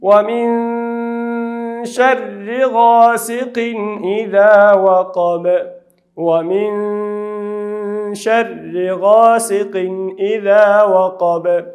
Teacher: وقب بعد قلقلې له حروفو څخه ده په آخر کې واقع شوې ده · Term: قلقله